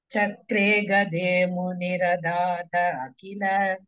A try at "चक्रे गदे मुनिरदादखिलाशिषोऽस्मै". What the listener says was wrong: It's not akhila, don't break, it is continuous. Muniradadkhilashishosmai.